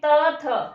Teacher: फिर है दंत्य, दंत्य में त थ, कहां पर आ रही है हमारी जो जीवा है, कहां स्पर्श हो रहा है? त, दांतों से